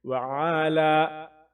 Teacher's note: لام یا زبر لا ایک الف کے برابر کھینچیں